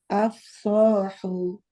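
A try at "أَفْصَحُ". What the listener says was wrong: Bibirnya dikeluar lagi. Af. Lagi. Baik, secara suara sudah betul. Cuma pas pengucapan itu Ustadzah gini bibirnya. Af, nggak masuk af, agak masuk. Jadi dikeluarkan aja. Af. Kalau suara udah oke, cuma kadang-kadang agak masuk bibir bawahnya.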